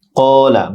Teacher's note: ক্বালা বড় কাফ মোটা হবে